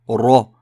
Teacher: Le mot suivant commence par un ra, R roulé avec une fatha, ra.